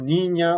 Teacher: con un fondo de tipo para tal nasal sonora es decir el punto de articulación es palatal hay resonancia nasal y bueno como en todas las vías nasales hay vibración de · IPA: ɲ